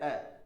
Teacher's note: जब हम अ को बोलते हैं अ, तो हमारे होठ उदासीन रहते हैं, कोई ज्यादा क्रियाशीलता नहीं दिखाते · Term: उदासीन स्वर